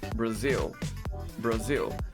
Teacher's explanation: a letra A, ela vai receber esse fonema schwa, que é o som mais curto da língua inglesa